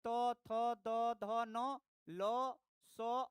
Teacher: ये सारे अक्षर दांत से बोले जाते हैं, जिसको दंत्य कहते हैं। तो उच्चारण स्थान हो गया दंत्य।